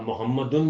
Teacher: میم کے اوپر جو پیش ہے وہ واو معروف کی آدھی آواز ہے